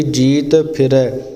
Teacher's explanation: ਇਸ ਲਈ ਜਿਵੇਂ ਫਿਰੈ ਸ਼ਬਦ ਆਇਆ, ਅਤੇ ਜਿੰਨਾ ਚਿਰ ਆਪਣੇ ਆਪਸ ਵਿੱਚ ਬੁੱਲ ਜੋੜ ਕੇ ਆਪਾਂ ਫੱਫਾ ਨਹੀਂ ਬੋਲਦੇ ਉਹਨਾਂ ਚਿਰ ਇਹ ਸ਼ੁੱਧ ਇਸ ਦਾ ਰੂਪ ਨਹੀਂ ਬੋਲਿਆ ਜਾਂਦਾ